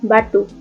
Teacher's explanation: B dengan bunyi hambat bilabial bersuara